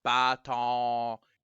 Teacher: the n isn't really pronounced at the end of bon